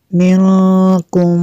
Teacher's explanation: نون ساکن کے بعد کاف حروف اخفا میں سے، یہاں پہ اخفا ہوگا اس لیے یہاں پہ غنہ کریں گے۔